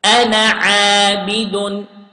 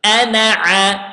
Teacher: I didn't pronounce the vowel, the alif in the ana word.